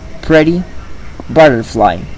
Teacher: in American English, when there is a flap, it is very similar to the R produced in Spanish.